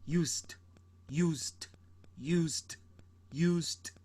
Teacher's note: you don't pronounce the e, it goes straight to the d. You just hear the d.